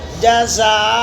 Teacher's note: دو زبر کا ایک زبر وقف کرنے کی وجہ سے الف سے بدل جاتا ہے